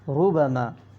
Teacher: را پہ پیش ہے، اس لیے اس را کو کیا پڑھیں گے؟ پر پڑھیں گے، یعنی موٹی آواز سے، ٹھیک ہے۔ را زبر را، حمزہ واو پیش او، راؤ، فا دو پیش فن، راؤفن، یہاں پہ بھی را پہ زبر ہے، اس لیے اس را کو پر پڑھیں گے.